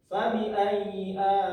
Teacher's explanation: Nah, selanjutnya di kalimat alai, di situ terdapat hukum yang namanya mad wajib muttasil, ditandakan dengan tanda seperti alis di atas huruf lam, dibaca panjang 4 atau 5 harokat atau 6